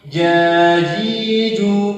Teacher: Yang benar tanpa berhembus, tanpa berdesis.